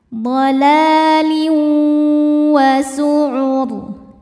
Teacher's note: Selanjutnya ada idgham bi gunnah karena ada tanwin kasrah menghadapi huruf waw. Cara bacanya tanwin masuk ke waw disertai dengung.